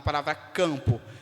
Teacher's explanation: Eu estou reproduzindo o som de A nasal. O M é apenas um símbolo, uma marcação de nasalidade. Não tem função de representar fonema.